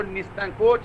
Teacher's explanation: और जो निसंकोच है उसमें दंत सा है